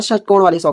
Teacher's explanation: जीभ की जो नोक होती है मुड़कर जो तालों के पीछे वाले हिस्से को छूती है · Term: मूर्धन्य शो